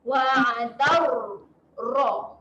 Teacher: Okay, kemudian huruf ra. Ra dekat sini keadaan dia tebal, muncungkan sedikit mulut. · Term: ra yang tebal